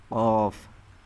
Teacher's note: জিহ্বার গোড়া ও বরাবর তালুর সাথে লাগিয়ে উচ্চারিত হয়